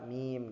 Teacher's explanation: huruf mim itu dia itu di bibir juga tapi pertengahan bibir, terus bersuara tipis juga